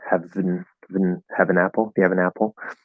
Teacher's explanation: Because have is stressed, N is not stressed, and then the first syllable of apple is stressed.